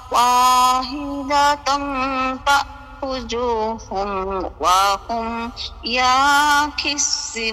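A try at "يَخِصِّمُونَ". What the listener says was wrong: ইয়ার মধ্যে টান দিয়া ফেলছেন, ইয়ার মধ্যে টান নাই, ইয়াখিসি, ইয়াখিসি।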